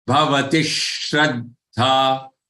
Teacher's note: join these two words together. Bhavatish with a hissing sound.